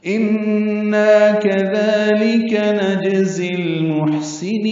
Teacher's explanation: جیم ساکن پہ قلقلہ ہے · ان نون مشدد پہ غنہ اور نا الف مدہ، دو حرکات لمبا.